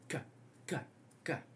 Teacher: K is a velar plosive, voiceless velar plosive.